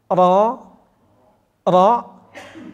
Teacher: sementara ro itu mesti harus tebal